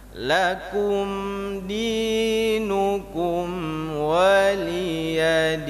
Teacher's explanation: Padahal saya ingin mengucapkan huruf nun, tapi karena gerakan mulut saya itu salah, terlalu cepat menutup sehingga terdengar huruf mim.